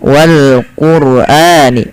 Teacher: lafal Wal Quran rnya dibaca dengan tebal